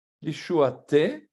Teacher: Un E qui est ouvert, vraiment prononcé comme un E normal.